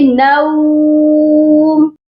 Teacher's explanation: لا تأخذہ سنۃ ولا نوم، اور یہ والے ورڈ میں بھی اکثر لوگ مسٹیک کرتے ہیں، نوم پڑھتے ہیں، یہاں پر نوم نہیں پڑھا جائے گا، نون کے ساتھ واو لین ہے اور حروف لین کو او کی آواز کے ساتھ نہیں ملایا جاتا، یہاں پر ہم پڑھیں گے نوم۔